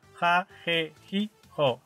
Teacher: Finalmente, aunque no es un cambio como tal, debido al contacto permanente con el español de México, en algunas pronunciaciones de hablantes bilingües, el sonido ah del saltillo se ha hecho más fuerte al cambiar su apoyo para asemejarse más al ja del español